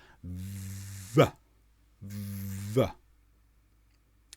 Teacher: you vibrate air between the top teeth and the bottom lip, and you make a sound as you vibrate. See my top teeth resting on the bottom lip.